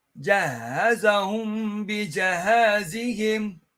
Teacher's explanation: When the noon sakin or a meme sakin is followed by one of the letters of ikhfa, the ghunnah that results from the ikhfa is complete in its timing, but not as long as akmal